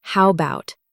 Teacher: The A sound almost disappears, making it faster and smoother to say.